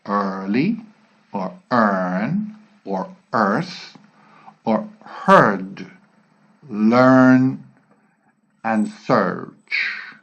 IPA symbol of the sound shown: ɜ: